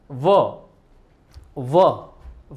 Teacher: વ છે એ દાંત અને હોઠ એટલે દંત્ય અને ઓષ્ટ્ય બંને વ્યંજનોનું મિક્સ છે એટલે એને આપણે દંત્યોષ્ઠ્ય વ્યંજન કહીશું બરાબર વ ત્યારબાદ હ બોલવાની